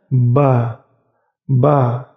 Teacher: bibir atas dan bibir bawah bertemu dan ditekan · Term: huruf ba